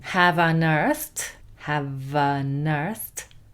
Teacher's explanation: V is a consonant, unearthed is a vowel sound, so that's going to sound as a single word